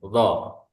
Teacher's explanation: Nah, itu untuk makhrajnya. Sifat yang dimiliki dari huruf d yakni jahr atau suaranya tidak ada angin ya.